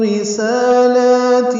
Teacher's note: رسالاتی میں را باریک ہے، سین لام کو 2 حرکات لمبا کرنا ہے کھڑا زبر ہونے کی وجہ سے